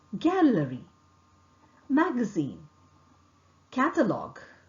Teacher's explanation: G sound is articulated with the back of the tongue making firm contact with the soft palate. vocal cord vibrates. G. For example, gallery, magazine, catalog.